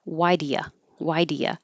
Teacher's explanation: I'm going to change do to duh, you to ya